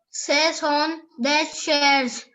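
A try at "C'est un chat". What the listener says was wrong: No, beta. Now this is not shares. Look at the spelling. CA. What is CAH? It is ka. Ka. CH sound is called sh, while CAH is ka.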